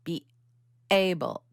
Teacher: Sometimes they'll make it a glottal attack like be able, like there's a kind of a little shock in the down in the vocal cords area or the throat. Like they're stopping the air from flowing out of their mouth when they're speaking to try and make a separation between be able.